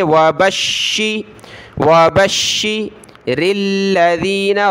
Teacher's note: बा को शीन के साथ मिलाया, तशदीद है, शीन को सख्त करेंगे